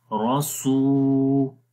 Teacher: روس، را کو موٹا پڑھیں گے، سین کو لمبا کریں گے، روسو. اور سین کو لمبا واو کی وجہ سے کریں گے کیونکہ یہاں پر واو مدہ ہے، مدہ کا مطلب ہوتا ہے لمبا کرنا، تو 1 الف کے برابر لمبا کریں گے، روسو.